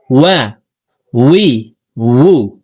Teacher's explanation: ওয়াও হরফকে দুই ঠোঁট গোল করে দুই ঠোঁটের মাঝে ফাঁকা রেখে পড়তে হবে